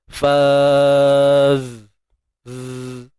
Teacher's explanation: Huruf zai ni bersifat rakhawah, suara mengalir.